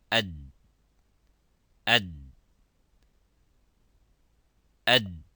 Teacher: So the sound stops within its makhraj, within its point of articulation, by saying ad, ad, ad. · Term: letter dal